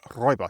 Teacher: That last syllable is just a little more clipped, and the R is almost trilled.